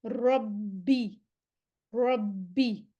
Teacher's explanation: با کے مخرج پر آواز ایک دفعہ بند ہو با ساکن پڑھنے کے لیے، پھر با کی زیر پڑھیں گے. با مشدد ہے نا، با پہ شد ہے، اس کا مطلب ہے ہمارے پاس 2 با یہاں پہ اکٹھی ہوئی ہے، ایک با ساکن ہے اور ایک با کے نیچے زیر ہے.